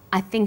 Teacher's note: the word think is stressed in this sentence